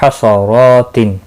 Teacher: रो के ऊपर खड़ी ज़बर है, एक अलिफ के बराबर खींच कर पढ़ेंगे और पुर भी पढ़ा जाएगा।